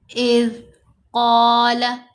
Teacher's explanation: قاف کو موٹا پڑھیں گے، زبر کے بعد الف آ گیا تو حرف مدہ ہے، قاف کو 2 حرکات کی مقدار لمبا بھی کرنا ہے۔